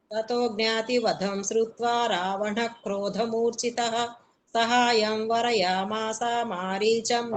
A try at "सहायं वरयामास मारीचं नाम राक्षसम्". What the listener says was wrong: మాసా దీర్ఘం లేదు, మాస మా మారీచం మారీచం